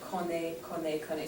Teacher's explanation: we're not pronouncing the last consonant, connaît, connaît, connaît, so we just hear the vowel sound at the end